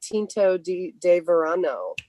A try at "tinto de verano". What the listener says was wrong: You to roll your R's, I think, when you say that.